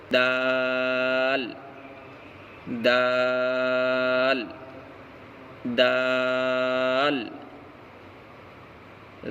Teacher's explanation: دال دال. دال کا مخرج زبان کی نوک اور اوپر کے دونوں دانتوں کی جڑ